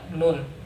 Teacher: huruf nun ini panjangnya ini ya, 6 harokat